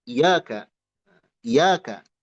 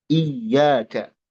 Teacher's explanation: Dua-duanya ya-nya dibaca dengan tasydid. Duna gunna, tanpa gunnah, tanpa dengung, tanpa ditahan.